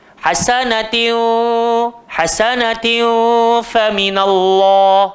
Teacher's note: Tanwin bertemu fa, nun mati bertemu fa, simpan dalam kepala elok-elok, gigi arnab duduk atas bibir bawah.